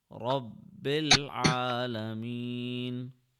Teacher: Since ba has a shadda, we will press the ba for 1 second.